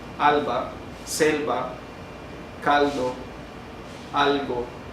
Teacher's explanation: la posición de la lengua dentro de nuestro aparato fonador hace que el aire se vaya por los costados de nuestro aparato, es decir, por lo que serían nuestras mejillas, en la parte de los dientes y las mejillas, por los lados de la lengua, y sale el aire. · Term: lateral